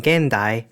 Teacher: alveolar n before ta, da, za, and ra as in gendai